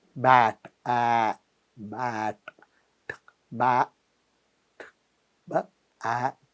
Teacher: So b is very short, a is long, and t is very short.